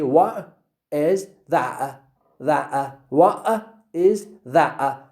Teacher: In American English, they say, what is that? What? is that, Hamza, Hamza, okay? So it is a glottal stop.